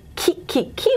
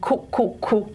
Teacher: And back vowels are produced in this velar region here, okay? So ki, ki, ki, we're at a front vowel, and ku, ku, ku, we're at a back vowel